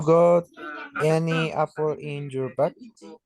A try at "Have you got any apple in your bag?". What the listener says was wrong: in your bag? Remember, yes, it's G, bag. Okay, correct.